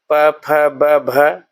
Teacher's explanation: प, फ, ब, भ ओष्ठ ध्वनियां हैं